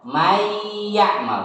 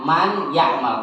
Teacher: di situ ada nun sukun bertemu dengan ya, maka nunnya itu harus dilebur ke ya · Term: idgham